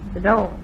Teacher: The way she said at all was interesting. The vowel is a little closed, more closed than usual.